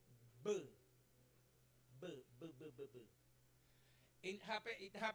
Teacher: Bilabial, voiced, stop sound